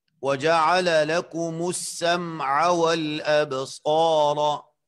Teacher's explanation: یہاں پر آپ سنیں جی، وَجَعَلَ لَكُمُ السَّمْعَ وَالْأَبْصَارَ، صاد یہاں پر مفخم ہے اور اس کے بعد الف مد آیا ہے تو اس کی بھی تفخیم اعلیٰ درجے کی، اور اس کے بعد را پر زبر ہے، اس کو بھی مفخم پڑھنا ہے۔